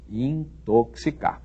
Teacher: Esse X deve ser lido como se houvesse aí um C e um S